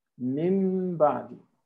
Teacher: the noon is changed into a meme